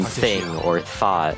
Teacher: as a voiceless pronunciation your vocal cords don't vibrate when pronouncing the sound